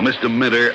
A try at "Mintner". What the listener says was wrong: No, with an N. Mintner, not Minter.